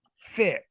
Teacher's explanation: x typically it breaks into in this case a k and an s